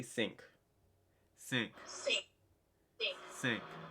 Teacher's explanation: the IN sound kind of makes that ang sound